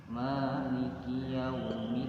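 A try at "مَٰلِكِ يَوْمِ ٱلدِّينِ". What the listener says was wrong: Ma-nya panjang. Ma 2 harkat. Coba maliki. Menekan kepada da karena ada tasdid. Maliki yaumid.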